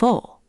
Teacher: The German W gives an English V sound. So the word for where, wo, actually sounds like wo.